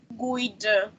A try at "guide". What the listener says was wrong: You said guid. You made a mistake, not in the consonant but in vowel. So you after G, we should use another vowel, not U. Not U. Guide. Guide.